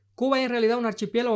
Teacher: como lo leería una persona de Santiago de Cuba que no pronuncia las S, al final de sílabas